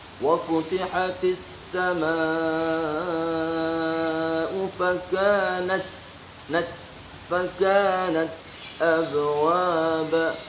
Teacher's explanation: huruf kaf dan ta apabila tersukun maka dibacanya berdesis, hamas